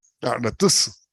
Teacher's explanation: en aratusu, esa U es tónica, ella no se va a desaparecer.